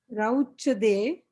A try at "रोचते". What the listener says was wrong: Not rauchate. Not rau. If it is rau, then I will not ask you to read.